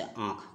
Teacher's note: अनुनासिक इसमें मुंह और नाक दोनों का प्रयोग होता है।